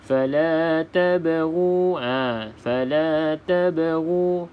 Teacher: fala tabghu, bermaksud huruf ba ini kena lantunkan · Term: qalqalah sughra